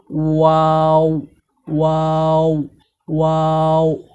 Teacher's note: ওয়াও হরফটি দুই ঠোঁটের মাঝখানের ফাঁকা থেকে গোল করে পড়তে হয়।